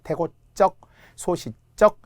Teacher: 명사 고유어입니다. 그래서 사이시옷이 들어가고 발음은 된 소리가 나네요